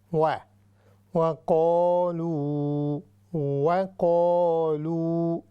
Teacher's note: وَقَالُوا یہاں پر یہ جو واو ہے، یہاں پر ہونٹ جو ہے ہمارے وہ آپس میں ملیں گے نہیں، بلکہ ان کو علیحدہ کر کے واو کی جو ہے ادائیگی ہم نے کرنی ہے